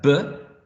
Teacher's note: Then I have b, which is voiced, right? It's a bilabial sound, and it is plosive.